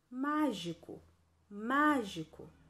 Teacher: quando eu pronuncio mágico mágico qual é a sílaba mais forte é a antepenúltima é o mar certo então circule o mar do mágico a